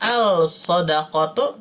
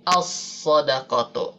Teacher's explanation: Di sini ada lam bertemu huruf shad dan huruf shad termasuk huruf syamsiah, maka lamnya tidak dibaca. Tidak al-shadaqatu tapi as-shadaqatu.